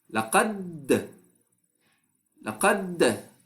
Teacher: By the end of the qalqala, I loosened my articulation point so that I allow air to come out from a loosened articulation point.